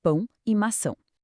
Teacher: jogando o som lá pro nariz, criando aquela nasalidade inconfundível de pão e maçã.